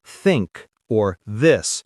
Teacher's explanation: The th sound like in think or this requires placing the tongue between the teeth, something many languages don't do.